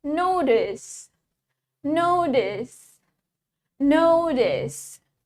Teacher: In American, we pronounce the T as D.